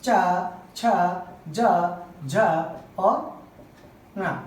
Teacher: तालु भाग से बोले जाने वाले वर्ण